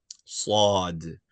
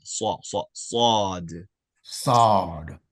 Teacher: The way it's written, it name is uh and like I said, it's a a sound, rounded sound, meaning elevate the rear of your tongue, curve the sides of your tongue.